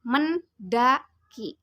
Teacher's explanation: Misalnya, ucapan kata pada kata bahasa mendaki terdiri atas 3 puncak kenyaringan yang ditandai dengan 3 denyutan dada ketika kata itu diucapkan. Puncak kenyaringan itu adalah pada huruf E dalam men dan A pada da, kemudian I pada ki